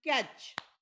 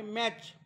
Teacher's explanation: T C H च्या अगोदर जो ये आलेला आहे त्याचा उच्चार ए झालेला आहे, म्हणजे शॉर्ट व्हाऊल, शॉर्ट उच्चार झालेला आहे त्याचा.